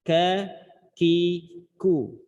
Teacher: Kaf punya sifat hams. Tapi dalam kondisi berharokat memang kadar bunyi hams pada sifatnya sedikit.